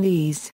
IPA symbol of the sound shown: ð